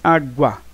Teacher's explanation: O A é mais forte do que o U. Aí é um ditongo.